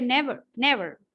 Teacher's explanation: The V is swallowed.